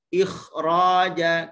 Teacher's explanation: Tapi disebabkan ada keadaan tertentu huruf ra selepasnya berbaris atas dan ada alif lagi, maka kita baca dengan ketebalan yang sempurna pada huruf kha. Ikhraja, tapi jangan sampai muncung, jangan sampai baca ikhraja, jangan.